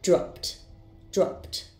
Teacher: First, I have the verb drop. Its sound ends in p, so the ed ending will be pronounced as t.